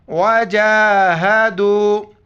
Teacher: جیم پر کڑا زبر ہے، ایک الف کی مقدار کھینچنا ہے اور دال کو واو کے ساتھ ملانا ہے.